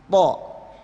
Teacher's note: To bibir tetap rileks. Jadi ujung lidah itu nempel ke pangkal gigi seri atas. Jadi ke gusi atas ya.